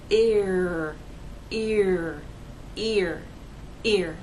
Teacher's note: take the first vowel sound and glide in to the ER sound